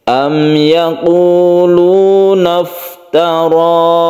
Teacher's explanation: Kita langsung mim mati bertemu dengan ya, ini kita sebut dengan izhar syafawi. Izhar artinya jelas, bacaan mimnya itu jelas. Syafawi artinya bibir, bahwa makhraj atau tempat keluar dari mim itu ada di bibir.